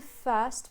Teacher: the stress syllable has the bird vowel which is basically like the long schwa so the tongue will be flat in the center and the